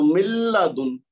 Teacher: نون کی آواز لگتا ہے ہی نہیں، یوں لگ رہا ہے کہ جیسے میم کے بعد لام لکھا ہوا ہے، نون جیسے لکھا ہوا ہی نہیں، لیکن حقیقت کیا ہے کہ لکھا ہوا ہے، پڑھنے میں نہیں آئے گا کیونکہ یہ بلا غنہ ہے۔ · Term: ادغام بلا غنہ